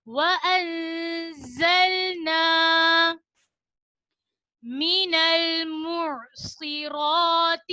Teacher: زا کو ادا کرتے وقت سیٹی کی آواز آئے گی. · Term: سیٹی والے حروف